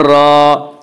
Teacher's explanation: را، الف سے پہلے زبر ہے، الف مدہ ہوا، اس لیے الف مدہ کو ایک الف کے برابر کھینچ کر پڑھیں گے